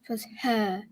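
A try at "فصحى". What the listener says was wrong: That's not a mint. What you did, fusha, is more like you had barbecue and you're like, ugh. Not barbecue, mint.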